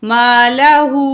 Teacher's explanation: الٹا پیش کو بھی 1 الف کے برابر کھینچ کے پڑھیں گے